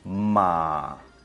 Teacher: Tercer tono, descendente y ascendente en el mismo movimiento de sonido